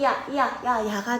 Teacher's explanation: 야 같은 경우는 어떻게 만들어졌냐면 반모음 이랑 아가 합쳐진 거야. 합쳐서 야가 되죠. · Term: 이중모음